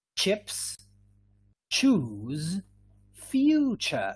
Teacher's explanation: these consonants these are quite special because they are made of two sounds